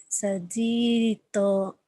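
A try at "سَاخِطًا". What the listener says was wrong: Sakhito itu bukan ji tapi ho.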